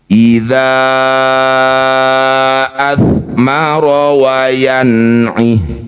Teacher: Panjangkan dza yang bertanda layar lima harakat. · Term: mad jaiz munfasil